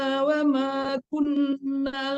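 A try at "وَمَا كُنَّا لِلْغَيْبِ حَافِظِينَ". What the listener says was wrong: Kunnalil, bukan kunnal tapi kunnalil.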